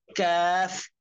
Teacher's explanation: 5 নম্বর মাখরাজ জিহ্বার গোড়া থেকে একটু আগে বাড়াইয়া তার বরাবর উপরে তালুর সঙ্গে লাগাইয়া মধ্যখান পেঁচানো কাফ।